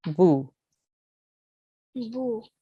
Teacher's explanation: Bu is for 1 second because it's a simple dhamma.